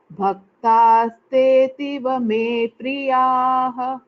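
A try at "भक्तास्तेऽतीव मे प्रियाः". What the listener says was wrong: Tastetiva, it is a dirgha. Te ativa. Ativa me priyaha.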